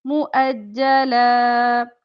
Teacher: लाम दो जबर है तो वक्फ करना है, तो एक जबर के साथ अलिफ मिला के पढ़ेंगे